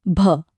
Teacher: ભ બોલતી વખતે ગળામાં જે કંપન થયું એ ફીલ થયું? બસ આ જ છે ફરક. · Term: ઘોષ ધ્વનિ